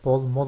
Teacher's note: bazı Türkçe sözlerin başında B sesi M sesine dönüşmüştür